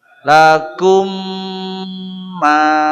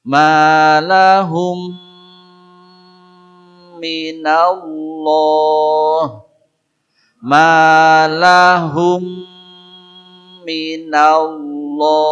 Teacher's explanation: Mim sukun jumpa mim maka disatukan, diidghamkan. Maka mim kedua diberi tanda tasydid. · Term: idgham mimik